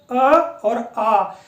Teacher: दोनों कंठ अर्थात गले के माध्यम से उच्चारित होते हैं